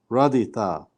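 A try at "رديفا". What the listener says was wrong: Radi fa. Radi fa with an F sound.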